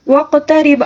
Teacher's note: قاف کے اوپر بھی ساکن ہے، اس کو بھی قلقلے کے ساتھ پڑھیں گے